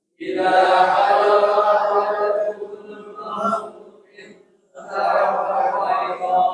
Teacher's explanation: In non sukun bertemu ta, ikhfa-nya antara n dan eng.